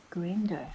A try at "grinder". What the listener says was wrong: It's actually I. Grinder.